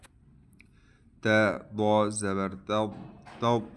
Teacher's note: student اس ضاد کو موٹا پڑھیں گے